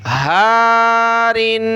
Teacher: ہا کو ایک الف کی مقدار کھینچیں گے